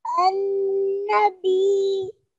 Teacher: you really need to hear that ya sound very lightly, but you still need to hear it